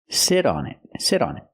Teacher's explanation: that t and sit changes to a fast d because it's between vowels